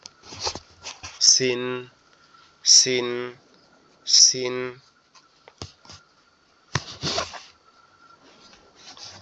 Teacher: সিন অক্ষরটা আমাদের জিহ্বার আগা সামনের নিচের দুই দাঁতের আগার সঙ্গে লাগে